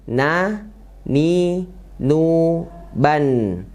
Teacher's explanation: Ujung lidah menempel ke langit-langit atas ya. Dan sifatnya tipis.